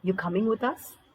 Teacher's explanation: it's a yes or a no you're coming with us see it looks like a statement right but yet you have given a high pitch to your tone when you ask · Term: declarative questions